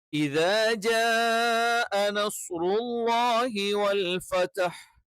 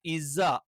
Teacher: അപ്പൊ ഇത എന്ന് പറയുമ്പം നാവിന്റെ തല മുൻപല്ലിന്റെ തലയിൽ തന്നെ എന്ത് ചെയ്യണം, ടച്ച് ചെയ്യണം.